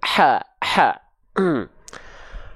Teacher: ha kecil yang asalnya dari tengah tenggorokan